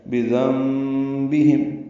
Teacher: بذنبہم با کو جلدی ادا کرنا ہے، ذال کو نرمی سے پڑھنا، نون ساکن ہے اور اس کے بعد با آنے کی وجہ سے نون کی جگہ میم پڑھیں گے. اس کو اقلاب یا ابدال کہتے ہیں، نون کو میم سے بدل دیا گیا ہے.